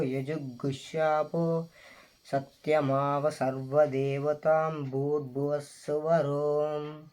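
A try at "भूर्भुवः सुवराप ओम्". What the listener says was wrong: ఈ ఓం అనేది ఎట్లా వస్తుందంటే హో వస్తుంది. హో అంటే ఇంగ్లీష్లో HOME హోమ్ అవుతుంది. ఓఎం ఓం రెండింటికి తేడా ఎట్లనో ఇది కూడా అంతే, ఓం అని పలకాలి. అయితే ఇక్కడ దీర్ఘాలు తీస్తే ఇది చాలా అద్భుతంగా ఉంటుంది.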